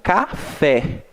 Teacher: Eu pronunciei um pouco mais forte o fé, né? Café. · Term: oxítonas